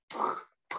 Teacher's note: 나는 폐쇄가 지속되면서 입안의 기류 압력이 높아져. 다는 두 입술이 열리며 기류가 순간적으로 방출되어 나오는 소리 · 윗입술과 아랫입술이 만들어지는 것이니까 이거는 이제 양순 파열음이죠.